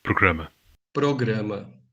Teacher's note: Retornar. Note that between vowels, or after a consonant but before a vowel, it's an alveolar tap in both varieties